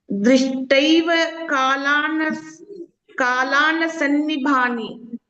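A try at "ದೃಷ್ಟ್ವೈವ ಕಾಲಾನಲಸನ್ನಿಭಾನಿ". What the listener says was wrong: ದೃಷ್ಟೈವ ಕಾಲಾನಲ ಸನ್ನಿಭಾನಿ. ಅಲ್ಲಿ ಲಾಕೆ ಒತ್ತಾಕ್ಷರ ಇಲ್ಲ, ನಲ ಅಂತ ಅಷ್ಟೇ ಹೇಳಿಕೆ. ದೃಷ್ಟೈವ ಕಾಲಾನಲ ಸನ್ನಿಭಾನಿ.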